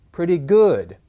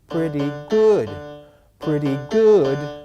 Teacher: is pretty good okay pretty good pretty good okay it goes it starts lowish and then up and then back down